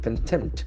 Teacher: The accent falls on the second syllable. Contempt. We have T and P sound.